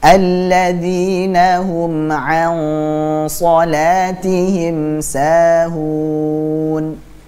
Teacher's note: Dan shad itu termasuk huruf tebal, maka gunnahnya, dengungnya kita tebalkan. Alladzina hum an, jadi bukan an shalah, tapi an, dan siap-siap ke makhrajnya huruf shad. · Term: ikhfa